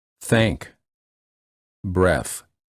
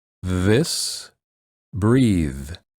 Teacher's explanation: the tip of the tongue touches in the back of the front teeth or the edges of the front teeth the air flows out between the tongue and the teeth th